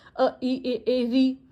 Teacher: ये हमारे अग्र भाग से बोली जाती हैं।